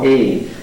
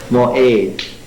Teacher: Usually it's pronounced simply as a glottal stop. And this is the letter that's in the middle of the word moed, which means congregation.